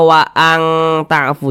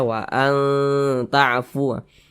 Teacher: cara membacanya tu disamarkan kemudian juga didengungkan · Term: dengung atau gunah